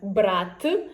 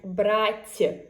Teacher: the last sound in the first word is t hard one and in the second word it's soft one